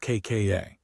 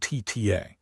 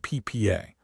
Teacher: Hold the sound back for a tiny moment as if building pressure and then release it suddenly. Crucially, unlike the aspirated sounds, there is no puff of air. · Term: tense consonants